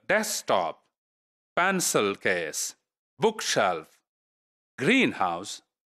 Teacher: So the first part of the word is made stressed.